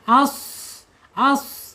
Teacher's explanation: Kemudian keluar napasnya. Kemudian ada di al-isti'la, isti'la terangkat lidahnya.